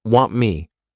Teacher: Now, want me. Here, all we're doing is, we're not pushing out that T sound. This is called a flat T